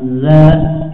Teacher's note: Zal memiliki sifat rokhwah, ada aliran suara ya, za ya. Dan sampai zal ini tertukar dengan huruf jim ya, ija ya, tapi za ya.